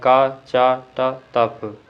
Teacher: अल्प प्राण और अघोष वर्ण है